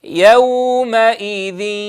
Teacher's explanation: أن يكون صوت الياء ممزوجا بالغنة، فيكون نصف الصوت لحرف الياء ونصف الصوت للغنة، فلا يطغى أحدهما على الآخر، فلا نقول مثلا يومئذ فيكون ياء صافية، ولا نقول يومئذ فتكون غنة صافية من غير ياء، بل لا بد من امتزاج الصوتين بنسبة متساوية.